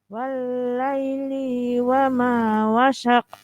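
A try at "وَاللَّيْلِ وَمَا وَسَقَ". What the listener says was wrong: Tipis sekali. Tipis sekali. Sinnya.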